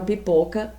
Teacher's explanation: ou fechada pipoca pipoca é uma sílaba tônica em pó e pó eu falo com a boca aberta e com muita intensidade com muita força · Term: vogal aberta